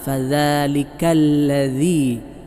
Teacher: നാവിൻറെ തല മേലെ മുൻപല്ലുകളുടെ താഴെ അറ്റത്ത് തൊട്ടാണല്ലോ ദാൽ ഉച്ചരിക്കേണ്ടത്